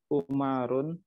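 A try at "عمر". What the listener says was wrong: Ya, itu bukan Umar. Kalau baca Umar itu ain mim ro biasa dan masuk kategori tidak bertanwin. Kalau mimnya panjang bertasdid bacanya apa? Ammar, baik. Ammarun.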